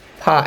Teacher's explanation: সামনের দুই দাঁতের ধারালো অংশটা নিচের ঠোঁটের পেটে লাগবে। ফা বলেন। হ্যাঁ, প্রথমে বাতাস একটু বের হবে।